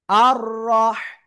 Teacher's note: রর উপরে জবর মোটা আওয়াজে পড়বো, এক আলিফ টান হবে।